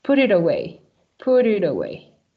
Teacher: These sounds, T and vowel, change as a sound of D